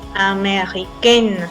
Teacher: acuerdo a la fonética a va a ser nasal America y con el femenino vamos a sentar más la n ameren y se va a romper esa nasalidad